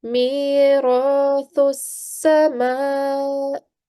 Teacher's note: there is a meme with a vertical fatha. Remember, guys, it stands upright. So we stretch the sound out for 2 seconds or 2 counts.